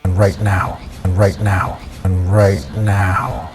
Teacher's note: at the end of each phrase downward intonation